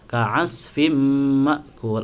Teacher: ada kasratain bertemu dengan mim, tadi juga sudah disebutnya idgham bi gunnah, maka harus dimasukkan dan dikasih gunnah.